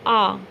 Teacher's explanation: विवृत जो है आ बोल के देखिए पूरा मुंह खुलेगा